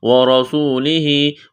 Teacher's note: واو کو پڑھتے وقت ہونٹوں کو گول کرنا ہے، را کو موٹا کرنا ہے